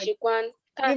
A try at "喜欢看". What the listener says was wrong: You've repeated the wrong tone for this word twice.